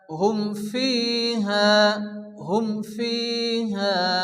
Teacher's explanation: মিম সাকিনের পরে, তাহলে বিনা গুণা জাহির করে তাড়াতাড়ি পড়তে হবে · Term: এজহারে সাফাবি